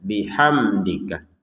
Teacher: mim sukun bertemu Dal kita baca dengan jelas